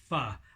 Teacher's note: the top teeth coming down to meet the bottom lip